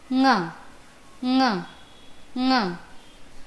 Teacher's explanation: अस्य उच्चारणस्थानं नासिकया सह कण्ठः अस्ति। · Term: नासिक्यवर्णेषु